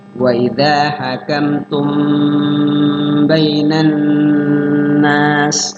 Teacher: mim mati ketemu ba adalah ikhfa syafawi. Cara bacanya mimnya disamarkan di bibir